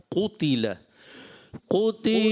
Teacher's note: قاف تھوڑا موٹا رکھیں